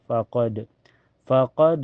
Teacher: Setelahnya ada hukum qalqalah sugra karena ada huruf qalqalah yaitu dal berada di tengah kalimat. Cara bacanya pantulannya lebih kecil ya.